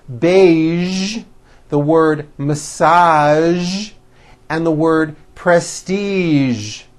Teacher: there are only a few words that have the voiced zh sound at the end.